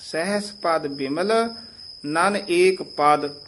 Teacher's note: ਪਦ ਬਿਮਲ ਨਨ ਏਕ ਪਦ ਇਥੇ ਪਹਿਲਾ ਵਿਸਰਾਮ ਹੈ ਸਹਸ ਪਦ ਪਦ ਪੋਲਾ ਬੋਲਣਾ ਹੈ ਬਿਮਲ ਤੇ ਠਮਕ ਲਾ ਦੇਣੀ ਹੈ